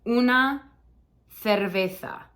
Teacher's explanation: Okay, this one's tough because it's got it's got a C and a Z, which both for this word become a TH sound for us.